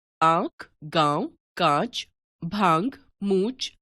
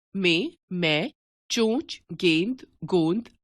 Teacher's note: यह ध्वनि अनुनासिक वास्तव में स्वरों का गुण है। जिन स्वरों का उच्चारण मुख और नासिका दोनों से किया जाता है, वे अनुनासिक कहलाते हैं।